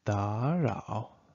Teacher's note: because you have two third tones here, you should change the first third tone to the second one